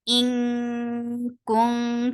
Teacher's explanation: So you are preparing your mouth to pronounce kaf and hiding the sound of noon. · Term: ikhfa